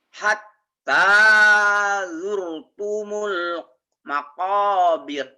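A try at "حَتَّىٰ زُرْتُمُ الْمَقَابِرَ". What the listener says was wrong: bagus.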